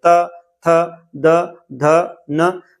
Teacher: जो हमारी जीहवा है वो दांत को टच करेगी। मतलब त थ द धिए जो जीवा है वो दांत को जाकर धक्का दे रही है। · जो जीवा है वो दांत को जाकर धक्का दे रही है। त थ द ध न मतलब ये सभी तो क्या कहलाएंगे वो कंठ कहलाएंगे नहीं मूर्धा कहला नहीं सकते वो दंत कहलाते हैं।